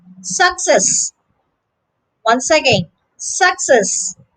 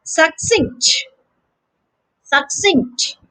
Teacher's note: in the next two words the stress is on the second syllable